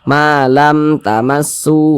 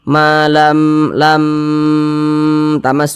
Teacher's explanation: huruf mim Tapi berjumpa dengan huruf Ta Maka semua hukumnya namanya izhar syafawi baca jelas tidak berdenggung pendek saja Ma lam tamu begitu Jangan dibaca maam lam tamu jangan dipanjangkan